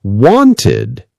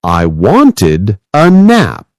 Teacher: In words like wanted, the ed makes its own little syllable like id.